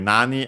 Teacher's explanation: nani, accent on the first syllable on the na itself